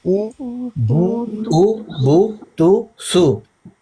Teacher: ہونٹو کو صحیح مکمل گول کر کے ادا ہوتا ہے. اگر ہم ہونٹو کو نامکمل گول کریں یا گول نہ کریں تو پھر یہ صحیح ادا نہیں ہوتا.